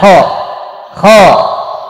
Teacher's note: Nah, di fathah jangan dipertahankan di fathah. Ya, karena kho ini memiliki sifat isti'ala, dia huruf tebal